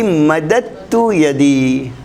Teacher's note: یہ دال اور تا چونکہ قریب المخرج ہم پڑھ چکے ہیں تو یہ دال لکھا جاتا ہے، پڑھا نہیں جاتا